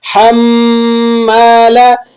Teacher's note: ہا کو آپ نے حلق سے ادا کرنا ہے۔